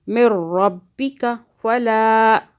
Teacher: با کی دو آوازیں تشدید کی وجہ سے